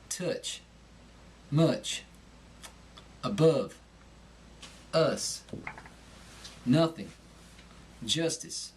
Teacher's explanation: the short u employ the nasal cavity when producing this sound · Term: nasality of the Southern draw